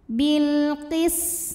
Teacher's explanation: karena alif lam menghadapi huruf qamariyah yaitu qaf, maka lam sukun kita bunyikan dengan jelas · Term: izhar qamari